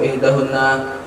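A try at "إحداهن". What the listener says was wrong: Ihdahunna, bukan ihdana tapi ihdahunna.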